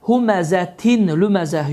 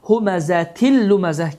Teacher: Deməli, idğam bilağunə qaydası baş vermişdir ki, n səsi, yəni tənvinlərin sonunda olan ən, in, unun sonunda olan n səsi tamamilə itir və bu hərflər isə şəddələnir.